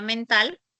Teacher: La A la vas a considerar como central y baja.